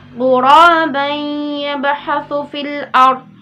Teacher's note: Ghuraban yabhathu fil ard. Ya, huruf ba di sini kan masuk dalam huruf qalqalah ya yang dipantulkan, namun di sini adalah qalqalah sughra karena dia berada di tengah kalimat. · ketika tanwin bertemu dengan huruf ya maka dibaca itu didengung 2 harokat dengan meleburkan huruf yang satu ke huruf berikutnya. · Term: idgham bi gunnah